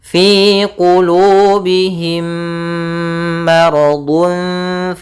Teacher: Kemudian ada mim mati bertemu dengan mim, ini kita namakan dengan idgham mimi, yaitu idgham yang kedua hurufnya mirip, sama, bukan lagi mirip tapi sama, yaitu adanya mim mati bertemu mim. Caranya adalah kita memasukkan mim yang pertama kepada yang kedua dan ditahan suaranya.